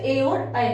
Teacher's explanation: कंठ तालु का किसमें उच्चारण होता है, कंठ और तालु से ए और ऐ का।